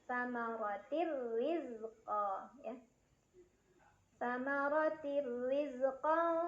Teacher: Samarotirri, ada idgham bila gunnah karena ada tanwin kasrah yang bertemu dengan huruf ra. Cara bacanya tanwin kasrah dimasukkan atau dileburkan ke huruf ra tanpa berdengung, jadi cukup ditekan.